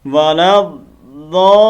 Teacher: ولا لام کو آگے ضاد کے ساتھ کنیکٹ کرنا ہے ، ٹھیک ہے، پھر مد لمبی کرنی ہے، ولا الضالین ولا